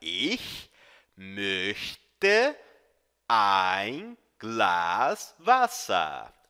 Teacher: o CH é um chiado lá no fundo da garganta